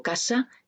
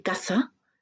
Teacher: En mi dialecto, casa y caza son pares mínimos, porque yo tengo un contraste fonológico entre la sibilante s y la sibilante z, la alveolar y la interdental.